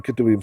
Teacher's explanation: the katuv becomes ketuv when we put an im on the end because the accent moves and that ah gets shortened. So ketuvim.